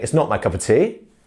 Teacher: They are saying the of, it's just not voiced.